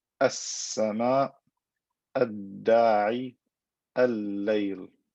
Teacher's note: I am not pronouncing the lam clearly, I am merging it into the next letter, and then the next letter gets shaddat because it has become two letters, right?